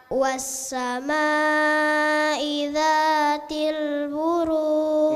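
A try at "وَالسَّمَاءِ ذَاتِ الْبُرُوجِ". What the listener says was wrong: Ma-nya agak kurang panjang. Panjangkan sedikit lagi. Pantulannya di akhir ada pantulan tapi jangan terlalu kuat.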